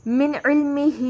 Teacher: عین وسط حلق سے ادا ہوگا